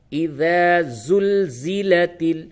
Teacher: زبان کا کنارہ اور اوپر کے دونوں دانتوں سے جب آپ اس کو دباتے ہیں نوک زبان کو تو اس سے ذال نکلتا ہے۔ تھوڑی سی زبان کو باہر نکالیں۔